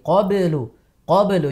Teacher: Lebih diperjelas lagi untuk huruf ba sukunnya qalqalahnya.